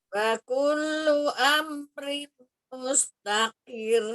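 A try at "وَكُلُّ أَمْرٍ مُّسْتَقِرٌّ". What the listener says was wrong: Tahan, rim itu idgham bi gunnah, tanwin ketemu dengan mim ya. Amrim mustaqir ya.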